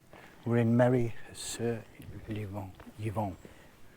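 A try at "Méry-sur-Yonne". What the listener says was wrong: There's no V in it though. Yonne. It's Yonne. Merry Sur Yonne.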